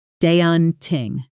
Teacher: stress on the first syllable and that a sound is like the a in law